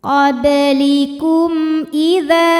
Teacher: Karena mim sukun menghadapi huruf selain mim dan ba, yaitu huruf hamzah, maka mim sukun dibunyikan dengan jelas. · Mad tabi'inya alif didahului fathah pada kata idza, hamzahnya a pada kata ataitumuhun. Maka huruf dzal kita panjangkan boleh 4, boleh 5 harokat. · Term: idhar syafawi, mad jaiz munfasil